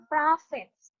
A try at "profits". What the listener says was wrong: Profits. Can you emphasize the letter F? Profits.